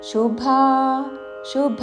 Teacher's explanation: శుభాశుభ తాళవ్యషు పక్కన మహాప్రాణాక్షము భా దీర్ఘముతో